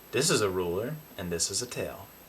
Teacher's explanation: So turning L into a vowel is actually kind of similar to how other accents turn R into a vowel.